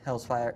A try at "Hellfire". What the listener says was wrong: not Hells. Hells. it's just singular. There was no multiple Hells here.